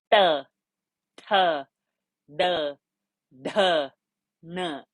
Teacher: So each time the tongue has rolled back to make those sounds. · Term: cerebral sound